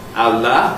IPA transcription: ɑlɑ